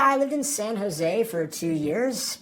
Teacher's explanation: My voice is rising at the ends of both those statements, but I'm not asking a question. That's uptalk.